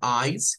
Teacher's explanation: la pronunciación eyes con una s silbante